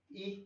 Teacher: जो संवृत होते हैं ये वो स्वर होते हैं जिसमें मुंह बहुत कम खुलता है, ना के बराबर।